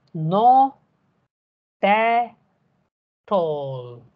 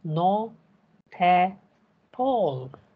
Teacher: So if you speak not at all, you are actually speaking no, ta, tall.